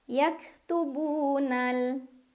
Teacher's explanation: Cara bacanya dipanjangkan 2 harokat. Yaktubunal ada alif lam qamariyah karena ada alif lam yang bertemu dengan huruf qamariyah yaitu qaf. Cara bacanya alif lam dibaca jelas.